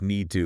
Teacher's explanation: often reducing to just need to like the t almost disappears